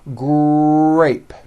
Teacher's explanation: It is important to understand that the R sound is the strongest sound of the blend, and your lips often come forward before you even say the word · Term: R blends